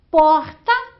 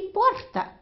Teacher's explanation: porta com R aspirado e porta com R caipira